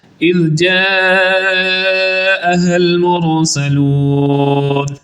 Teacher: اصحاب القریہ اذ جاءها المرسلون، اذ کی ذال کو درست پڑھیں گے، جاءها المرسلون، جا کو لمبا کریں گے مد متصل ہونے کی وجہ سے، المرسلون کی را کو پر پڑھیں گے اور سین کو سیٹی جیسی آواز سے پڑھیں گے اور آخر پہ لمبا بھی کریں گے۔